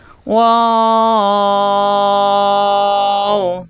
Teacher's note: দুই ঠোঁট থেকে উচ্চারণ, দুই ঠোঁট মেলবে না, এই যে ঠোঁট গোল হবে।